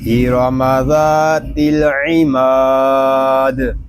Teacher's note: دال زیر دی، ذات العمادی، اور وقف میں ہوگا ارم ذات العماد۔ وقف میں قاعدے ہوں گے مد عارض، دال ساکن میں کلکلا اور وقف بالاسکان